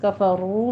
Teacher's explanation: را کے اوپر دیکھیے ضمہ ہے، اس کو پر بھی پڑھنا ہے اور آگے واو مدہ ادا کیجئے، 2 کاؤنٹ کرنا ہے.